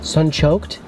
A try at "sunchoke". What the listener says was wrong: No D at the end. Sunchoke.